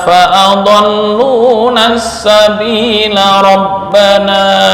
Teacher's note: ketika wasal dibaca pendek